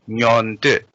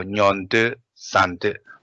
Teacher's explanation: They use san de nasalized.